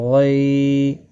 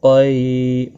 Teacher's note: موٹا قاف ہے، غین بھی موٹا ہے، مستعلیہ کا خاص خیال رکھیں